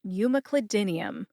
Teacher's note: Emphasize M and din. Din gets the most emphasis.